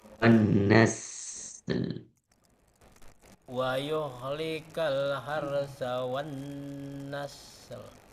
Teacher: ketika sin yang sukun itu dipanjangkan, ditahan aja sebentar.